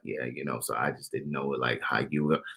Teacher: what is this thing that he does when he talks, like this vocal fry?